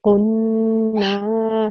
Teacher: can you hear how I join the qaf and the noon and how I'm making the noon also long?